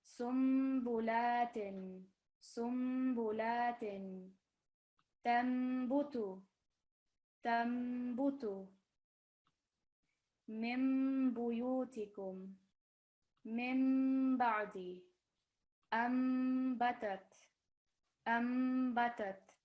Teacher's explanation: pausing on the meme sound when joining with the ba